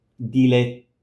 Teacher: You prepare the t, so you place your tongue, t, and you just hold it there for longer. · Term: long T